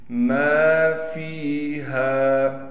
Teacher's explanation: میم کے بعد الف ہونے کی وجہ سے میم کو کھینچ رہے ہیں